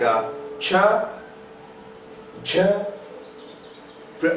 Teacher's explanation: there is complete closure followed by slow release of articulating organs. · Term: affricates